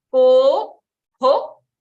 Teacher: the visarga is rhyming with the vowel coming before it